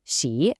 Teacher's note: 喜, that's a third tone, so it does a little dip and rise.